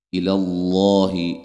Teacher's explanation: لفظ اللہ کے لام کو موٹا ادا کریں گے، اس سے پہلے حرف پر زبر ہے